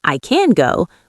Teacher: In I can go, we squeeze the word can and make it very short